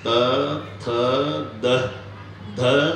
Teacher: प्रत्येक वेळेला जीभ आतून धक्का मारते दाताला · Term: दंत्य